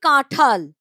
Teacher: অল্প প্রাণ ধ্বনি উচ্চারণে মহাপ্রাণ ধ্বনিতে পরিণত হয়। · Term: মহাপ্রাণী ভবন